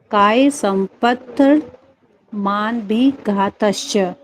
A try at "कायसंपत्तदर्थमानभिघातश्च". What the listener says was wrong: मन तदर्थ भी आएगा बीच में, काय संपत् तदर्थमानभिघातश्च।